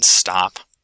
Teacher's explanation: It can be released but not aspirated. This happens, for example, in the ST consonant cluster in stop.